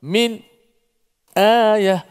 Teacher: Ada imam yang baca secara saktah terus. Berhenti sekejap, tak tarik nafas.